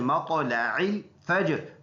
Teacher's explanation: جیم میں قلقلہ ہے اور را ساکن کریں گے وقف کی وجہ سے. تھرڈ ورڈ پر ادھر زبر ہے تو اس را کو ہم نے پر ادا کرنا ہے. · طا میں قلقلہ ہے اور موٹا حرف ہے, اور عین اور لام کو ملانا ہے